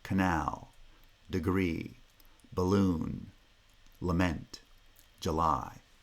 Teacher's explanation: the pre-foot syllable is not in a foot and it must therefore be unstressed and the vowel will always be reduced to schwa